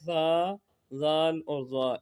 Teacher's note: ان میں سیٹی کی آواز نہیں آتی